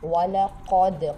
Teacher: وَلَقَدْ قاف موٹا پڑھیں گے، دال پہ قلقلہ ہوگا۔